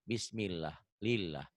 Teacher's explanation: Lafaz Allah dibaca tipis, kalau sebelum lafaz Allahnya baris di bawah.